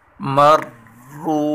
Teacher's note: را کے اوپر سختی کریں گے اور را کو پر پڑھیں گے اور واو مدہ ہے، را واو پہ شروع، اس کو کھینچ کر پڑھیں گے۔